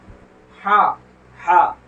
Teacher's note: ये बड़ा हा है, ये हलक से निकलता है